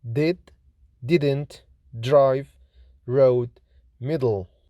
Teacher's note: T is voiceless, fortis, alveolar, plosive consonant, like in tea, tap, tree, trap, telemetry, Tom, Thomas. D is voiced, lenis, alveolar, plosive consonant